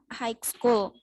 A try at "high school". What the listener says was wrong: Bukan hike tapi high school. Ya, kayak kamu ketemu teman high itu bacanya seperti itu ya. HIGH itu dibaca high. High school, bukan high school.